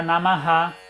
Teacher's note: como geralmente vem no final da frase, a visarga, ela tá espelhando o que vem antes, porque não tem nada para vir depois.